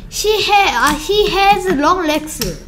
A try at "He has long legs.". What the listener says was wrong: 아 하고 멈추는 거 없이 He has long legs.